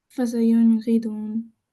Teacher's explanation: that noon was nice and clear, but it wasn't held. We didn't do any kind of vibration-y sound.